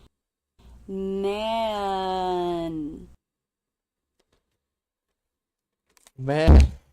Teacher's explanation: The N. The front part of the tongue simply goes up to the roof of the mouth.